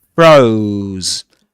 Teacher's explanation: This is a long diphthong here. Froze because of the final sound. The final z sound.